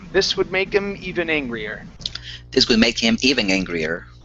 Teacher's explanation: when you're coming up on even, I come up just a touch. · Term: intonation